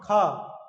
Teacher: एक दबंगी सी आ रही है उसमें महा ज्यादा प्राणवायु की आवश्यकता है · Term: महाप्राण